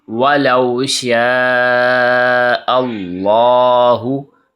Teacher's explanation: حمزہ زبر لام اللام کھڑی زبر لا، اللہ، لا کو موٹا کریں گے کیونکہ اللہ کے لام سے پہلے زبر ہے